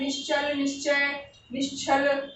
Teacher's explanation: चा वर्ग भी तालव्य का है और ये वाला सा भी तालु का है, इनका उच्चारण भी तालु से ही है। तो इस वाले इसके साथ हमेशा इसी सा का प्रयोग होगा।